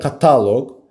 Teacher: Kataloq sözündə bax, vurğu gəlir kataloq. Vurğu düşür A-nın üzərinə, ikinci hecədə.